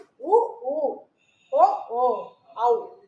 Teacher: இதை நீங்க சொல்லி பாத்தீங்கன்னாவே இதழ்கள் வந்து குவிப்பதனால பிறக்குது. இந்த எழுத்துக்களும் வந்து இதழ்கள் குவிவதால் பிறக்கிறது அப்படின்னு சொல்லியிருக்காங்க.